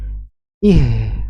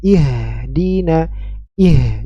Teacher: huruf ha besar ya H yang keluar dari tenggorokan bagian bawah